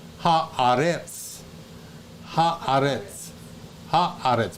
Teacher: the accent is on the aleph. Okay, on the second syllable, and that is the word the earth versus earth.